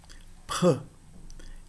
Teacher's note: Ela representava um som que era um som labial surdo, som de pã, seguido de uma aspiração. Então, a pronúncia do som representado pela letra fi deveria ser pr e a rigor do nome da letra seria pri, né?